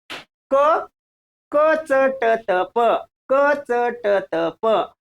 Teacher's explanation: क कंठ्य, च तालव्य, ट मूर्धन्य, त दंत्य, प ओष्ठ्य.